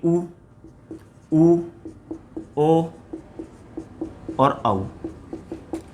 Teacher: इनका जब हम उच्चारण करते हैं तो ओष्ठों की आकृति किसके समान हो जाती है, वृत्त के समान, इसलिए इन चारों को क्या माना जाता है दोस्तों, वृत्ताकार स्वर माना जाता है।